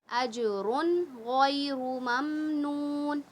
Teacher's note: تو یہاں پر تو ہمیں اظہار کرنا ہے، نون کی آواز کو ظاہر کر کے پڑھنا ہے